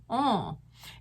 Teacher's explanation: the back of your tongue is very close to the roof of your mouth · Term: French nasal